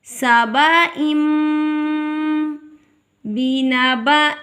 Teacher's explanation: دو زیر کے بعد با آ گیا یہاں پر اقلاب ہوگا با کو میم میں بدل کے ہم ادا کریں گے